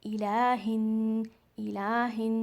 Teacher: यहाँ पर again हमज़तुल वसल means silent अलिफ, यहाँ पर साइलेंट अलिफ है तो ये अलिफ नहीं पढ़ा जाएगा, आपने हा को नून में मिलाना है। इलाहिन इलाहिन, नून मुशद्दद, यहाँ पर आपने गुन्ना करना है।